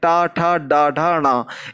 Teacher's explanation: ये देखिए जब आप बोलेंगे पांचों वर्ण तो ये मूर्धा के अंतर्गत टच होगा, इसलिए इसका उच्चारण स्थान मूर्धा कहलाता है।